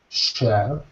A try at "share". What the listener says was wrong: That was better, yeah.